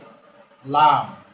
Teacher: জিহ্বার আগার কিনারা উপরের দাঁতের মারির সাথে লাগিয়ে